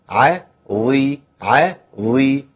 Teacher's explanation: والظاء لما تكون مكسوره تبقى ضعيفها بس ضعفها اقل من القاف والغين والخاء عند الكسر